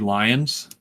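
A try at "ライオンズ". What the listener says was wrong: You mean the Ryans? They are the Ryans because they don't have an L. It's Ryan-su.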